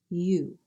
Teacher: The sound U is made up of two sounds, E and OO. You. You glide the two sounds together to make the capital U sound.